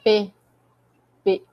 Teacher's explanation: É um som oclusivo, é um som que ele parece que explode, literalmente